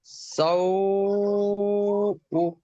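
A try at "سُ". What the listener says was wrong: সাউ উ কেন? সিন ও পেশ কি হয়? সিন ও পেশ সাউ হয় না, সু হয়, সু। সিন পেশ সু, সিন ও পেশ সু।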